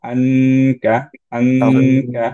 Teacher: কাফের মাখরাজ একটা হার্ড প্যালেটে রুফের দিকে, যেরকম ক আমরা করে থাকি।